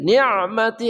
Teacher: Ni'mati ya, ni'mati ain tengah kerongkongan